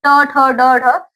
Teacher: ट ठ ड ठ मुर्धा में जाके टच होता है। इसीलिए ये इनका स्थान है।